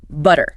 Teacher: Like a very quick tap of the tongue. It sounds almost identical to a quick D sound. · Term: flap